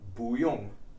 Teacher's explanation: a rising tone boo usually has a falling tone boom but when it precedes a fourth tone syllable like young it changes to a rising tone which allows for a more natural cadence in your speech so